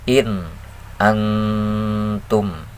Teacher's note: yang ini dulu ya belajar izhar dalam dua kalimah nun sukun nun sukun menghadapi Hamzah dalam dua kalimah jadi harus dibaca jelas